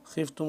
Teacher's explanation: خا کو موٹا کر کے پڑھیں گے